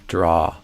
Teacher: I would do ah, a more open sound like the ah in father